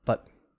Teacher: So you're unrounded your lips, especially in American English. The lips are really unrounded.